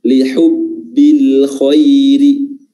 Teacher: Dan setelahnya ada huruf ra yang berharakat kasrah. Dan huruf ra-nya itu pastinya dibaca tipis karena berharakat kasrah